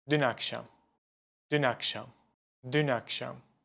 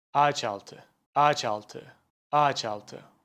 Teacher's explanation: These words connect together and they make one continuous sound. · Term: Ulama